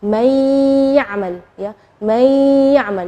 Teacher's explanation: nunnya tidak jelas tapi ada suara dengung ghunahnya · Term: idgham, idgham bi gunnah